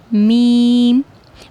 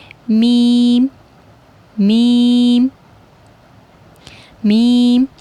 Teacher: یہ حرف ہونٹوں کے باہری حصہ جو ہے، یعنی ان کا جو خشک حصہ ہوتا ہے، اس سے ادا ہوتا ہے